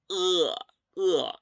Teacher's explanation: Es más como si estuviésemos diciendo una sensación de desagrado cuando yo digo uh. Entonces, el sonido de la e va a ser más con la garganta cerrada.